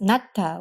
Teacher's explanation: pronounced Nat with an aspirated T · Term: aspirated ta